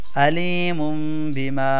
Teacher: এই তানভীন টাকে ছোট একটা মিম দ্বারা পরিবর্তন করে আমরা গুন্না সহকারে পড়বো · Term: ইকলাব